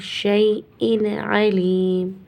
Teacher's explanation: اس تنوین میں اظہار ہوگا. ان کی جو ساؤنڈ ہے وہی نکلے گی.